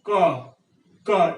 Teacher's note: And in ka, your tongue is bent backward, and this is called velar plosive.